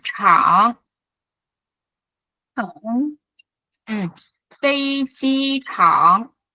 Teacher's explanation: 飞机场， Phây chi trảng, trảng chữ CH này chúng ta đọc giống như chữ trờ, cong lưỡi và bật hơi nha các bạn nhé, cong lưỡi và bật hơi ha, trảng.